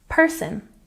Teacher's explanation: Remember to put the stress on the first syllable when you say person